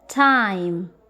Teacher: A is longer in duration, while I is shorter and unstressed. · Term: diphthong